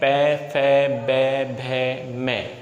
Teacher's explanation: दोनों होठ हमारे एक दूसरे को स्पर्श करेंगे तब जाकर के पै वर्ग बोला जाएगा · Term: औष्ठ्य वर्ग